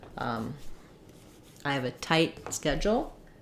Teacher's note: You're going to stress on the schedule, and tight is going to be shorter. So, and because we have a T followed by a consonant sound, we're going to use stopped T here.